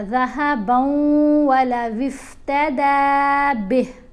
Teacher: یہاں با کو واو سے ملایا